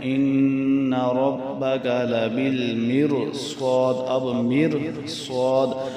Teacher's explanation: جیسے اس کی مثال یہ سورۃ الفجر میں ان ربک لبالمرصاد، اب مرصاد، اب یہ را سے پہلے تو زیر ہے لیکن اس کے ساتھ ہی آگے صاد موٹا حرف آ گیا تو یہ موٹے حرف ساتھ آنا، صاد جو موٹا حرف ساتھ آ گیا اس کی وجہ سے یہ اب را بھی ساتھ موٹی ہو جائے گی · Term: را موٹی